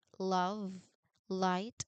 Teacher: That's a big name, but it simply means that while you touch the tip of your tongue to the alveolar ridge, which is the same spot behind your teeth you've used so much today, you don't block the air entirely. Instead, you let the sides of your tongue drop down, creating a path for the air to flow out laterally, meaning around the sides of your tongue. Because it is an approximant, there is no harsh friction or sudden pop. · It is a smooth, continuous, and voiced sound, so your vocal cords should be humming throughout the entire production. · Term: alveolar lateral approximant